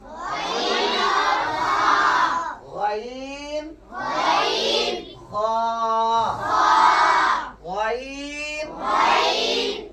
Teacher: अदना-ए हलक से जो दो हुरूफ अदा होते हैं वो है गैन और ख